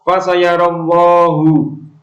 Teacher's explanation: lam jalalah ini disebut lam jalalah tafkhim atau tebal. Sebabnya adalah lam jalalah didahului oleh fathah.